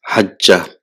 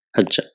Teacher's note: So there are three letters, hajja, but because the ain kalima and lam kalima are same, the ain kalima loses its vowel sign and there is idgham, what is called assimilation. So it is called idgham.